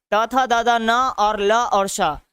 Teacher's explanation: त थ द द न और ल और श, त थ द द न और ल और श को अगर देखा जाए तो दंत और जीभ से बोला जाता है, दंत और जीभ से, तो उसको दंतस्थ के श्रेणी में रखते हैं।